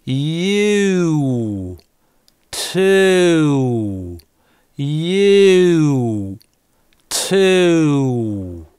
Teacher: Мы начинаем просто от звука [t]. А губы вытягиваем и язык внутри приезжает в «у» с запозданием.